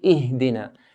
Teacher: Ihdina here, we don't bounce it, we don't make a qalqala sound.